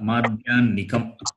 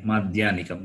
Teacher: The hakara takes the sound of nakara